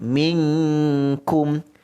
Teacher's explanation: Minkum dengungkan dengan kadar dua harakat